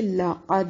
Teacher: لقد لام کو کھینچنا نہیں ہے. قاف کو موٹا اور دال پر قلقلہ کریں گے کیونکہ دال حروف قلقلہ میں سے ہے